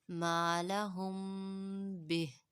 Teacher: جیسا کہ ہم نے اخفاء شفوی کے قاعدے میں جانا تھا کہ میم ساکن کے بعد حرف با آ جائے تو ہونٹوں میں ایک الف کے برابر آواز کو چھپائیں گے